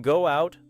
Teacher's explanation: the rounded vowel at the end of go may move into out with a light W-like glide because the lips are already rounded